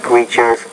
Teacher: you need to pronounce the T as a t with more air not as a d